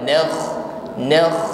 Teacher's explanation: nakh sukun ngorok bunyinya lembut ya. Sifatnya isti'la, tebal.